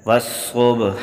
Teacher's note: با پر قلقلہ ہے